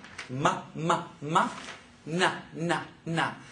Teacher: They're voiced, but they're also considered nasal. So it's difficult to make the sound when your nose is obstructed or plugged.